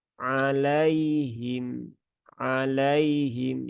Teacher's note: sifat Lin pada lafaz ini ya lafaz alaihim jadi harfulfulin itu sifat Lin itu dia dibaca dengan lembut ya dengan lembut jangan di paksa ya jangan ditekan ya jangan juga disentak sentak ya tapi biasa saja ya membacanya